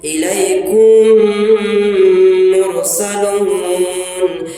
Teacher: الیکم کہہ کر کے ہلکا سا گنگنائیں گے، اسی کا نام گنہ ہے